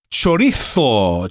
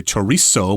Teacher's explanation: And if you're speaking Spanish, the Z there, or the Z, will have kind of a TH sound.